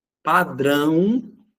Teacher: ele representa a sílaba tônica oxítona com som nasal, por isso que é acentuado. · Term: ditongo nasal ão